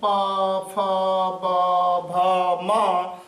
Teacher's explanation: तो प वर्ण में जो उच्चारण होता है आपका, जैसे प, फ, ब, भ, म, इन सब का उच्चारण स्थान जो होता है ओष्ठ होता है